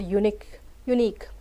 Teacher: in the word unique, the stress is on second part